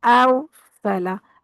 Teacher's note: اب یہاں دیکھیں را، ابھی ہم نے پڑھا ہے کہ را ساکن ہے اور اس سے پیچھے اگر زبر ہے تو را پر پڑی جائے گی، تو یہاں پر را پر پڑی جائے گی، الف پر، حمزہ پر نہیں ہوگا، اوصلا نہیں کرنا، اوصلا، را کو پر کرنا ہے، آ کو پر نہیں کرنا